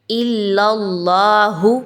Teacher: اللہ کے حرف کو پر پڑھا جائے گا کیونکہ اللہ کی جو لام ہے اس پر زبر ہے